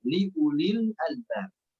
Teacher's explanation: Wan naharil la ayatil liulil albab. Baik, pada kata liuli di sana, wawunya itu tidak dibaca, ya. Tidak dianggap, tapi langsung dibaca liuli saja.